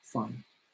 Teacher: And the intonation is down